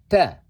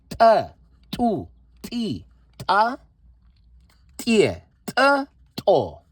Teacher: The sound is kind of like te in Spanish, where your tongue, the tip of your tongue is placed not just behind your teeth, but rather, I believe, where what is called the alveolar ridge starts. So that would be basically maybe about a centimeter or two behind your teeth.